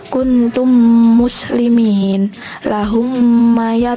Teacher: harus disertai dengan guna atau dengung dengan memasukkan huruf mim sukun ke dalam huruf yang sesudahnya